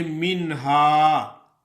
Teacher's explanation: ظاہر کر کے نون کو پڑھا جاتا ہے، یعنی بلا غنہ، بغیر غنے کے نون ادا ہوتی ہے